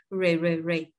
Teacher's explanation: R với y là re re re. Âm r cuộn tròn đầu lưỡi. Đầu lưỡi không chạm vào vần miệng ha. Re re re. Hạ giọng xuống.